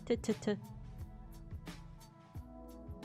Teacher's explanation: Voiceless, dental, or alveolar stop plosive. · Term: T sound